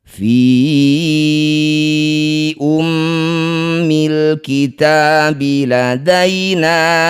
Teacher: Di lain kata disebut bacaan namanya mad jajaiz munfasil. Fi yang bertanda layar panjangkan lima harakat.